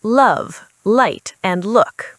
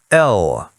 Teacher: For this sound, your tongue tip touches the area just behind your top teeth. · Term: l sound